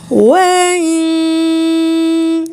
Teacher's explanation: नून की आवाज छुपा लेंगे गुने जैसी आवाज आएगी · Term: इफा